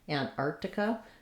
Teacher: What we want is, we do want the T, Antarctica. It's going to be light again on this T because this first syllable, ant, is unstressed